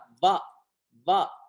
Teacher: இது பல் உதடோடு இயைந்து வருவது